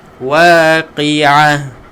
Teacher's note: bila kita wakaf pada huruf ta marbutah ataupun ta bulat ni tuan-tuan, kita akan tukarkan ta kepada huruf ha